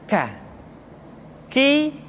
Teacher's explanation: diucapkan dengan mengangkat pangkal lidah kita ke posisi di depan huruf qof